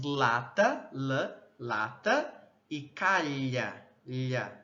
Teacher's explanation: formando aí, né, canais aos lados do trato vocal que dão uma vazão lateral da passagem do ar